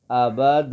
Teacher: اچھا، اس الف کا جو مقصد ہے نا وہ یہ ہے کہ جب یہ حرف کسی حرف کے ساتھ اٹیچ ہو جاتا ہے، مل جاتا ہے، تو اس وقت اس الف کی وجہ سے اس الف سے جو پہلا حرف ہوتا ہے اس کو کھینچا جاتا ہے. مثلا آباد، اور کھینچنا کتنا ہے؟ ایک الف کی مقدار، اور ایک الف کی مقدار 1 سیکنڈ ہے